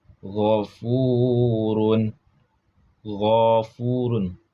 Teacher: Suara keluar dari bagian atas tenggorokan dekat mulut. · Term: adna al-halaq